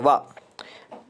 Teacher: तो हाँ, वकार जो है, वा सूत्र है ना, वकारस्य दंतोष्ठम, तो वा का उच्चारण स्थान जो है वो दंतोष्ठ होता है